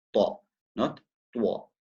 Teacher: The common mistake is to use your lips and to make a wow sound. So it's not twa.